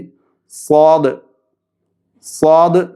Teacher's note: നാവിൻ്റെ കൂർത്ത അറ്റവും മേൽ കീഴ് മുൻപല്ലുകളുടെ ഇടഭാഗവുമാണ് സ്വാദിൻ്റെ മഖ്റജ്.